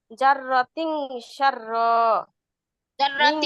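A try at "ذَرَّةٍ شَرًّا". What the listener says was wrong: জাররাতিন বলে গুণনাও করতে হবে। এখানে আমরা কি পড়ছিলাম, এই নুন সাকিন ও তানবিনের পরে যদি এই 15টি হরফের যে কোনো একটি হরফ আসে, তাহলে আমরা ওই নুন সাকিন বা তানবিনকে নাকের ভিতর লুকাবো, আর সাথে সাথে কি করব, গুণনাও করব।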